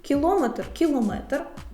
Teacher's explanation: на третьому складі треба наголошувати слова кілометр